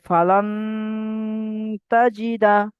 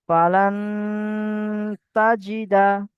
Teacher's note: আমি আওয়াজকে নাকে তুলে গুণনা করছি